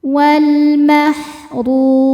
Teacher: Ro dibaca secara tafkhim karena berharakat domah.